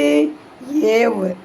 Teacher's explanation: எழுத்து எது ஏவ் இவ்வுங்கிற எழுத்தை சொல்லும்போது எவ் அப்படி சொல்லும்போது என்ன ஆகும் மேல இருக்க பல்லு வந்து கீழ இருக்கிற உதடை கடிச்சு தொட்டு சொல்லும்